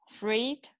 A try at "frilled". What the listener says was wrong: Frilled? Frilled? Frilled, that's an L. Yeah, it's a tough one. Frilled. Say it's an L sound. That's a tough word.